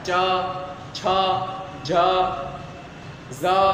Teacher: ચ છ જ ઝ આ બધાને વાત કરતા જીભ અડે છે તાળવાને અડે છે બરોબર। તો આ બધાય છે તાલુ એટલે કે તાળવામાંથી ઉચ્ચારણ કરવામાં આવે છે। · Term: ચ વર્ગ